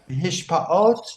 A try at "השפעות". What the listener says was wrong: not hishpaot, hashpaot, influence.